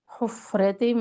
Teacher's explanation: فا کے اوپر ساکن ہے تو اس میں ہمس اور بھی واضح ہوگا